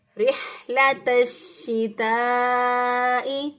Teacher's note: اب ہا جو ہے اس کو وسط حلق سے ادا کرنا ہے، حلق کے درمیان سے، کیونکہ یہ حروف حلقی میں سے ہے تو گلے کے درمیان سے اس کو ادا کریں گے.